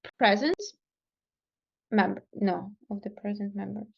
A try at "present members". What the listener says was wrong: You said it perfectly. The only thing is you aspirated this T, and we have a consonant in front of it, right? So it would be of the present members. Present, instead of aspirating it.